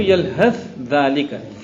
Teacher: ثا اور ذال متحد المخرج، ادغام متجانس ہیں